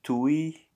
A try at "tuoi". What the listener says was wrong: It's not tui, it's tuoi, pantaloni.